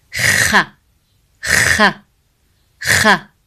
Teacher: Kha sound is pronounced from top throat. So it's the throat letter. It's not from the tongue, far tongue like ka sound.